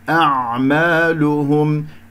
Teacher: اجتمع عندي الهمزة والعين، حرفان متجاوران في المخرج، فتحتاج إلى دربة حتى أنه أنا أعطي كل حرف حقه. أعمالهم وانتبه في اللام والهاء نضم الشفتين فيها، الميم مظهرة في الوقف والوصل